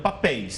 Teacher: Porque não é paroxítona, é oxítona, ou seja, a última sílaba é a forte.